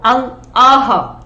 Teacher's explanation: और आहा में जो इसका उच्चारण होता है, जब हम इसको बोलते हैं तो हवा जो है वो कंठ से, इसका उच्चारण कंठ से होता है। कंठ यानी गला। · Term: विसर्ग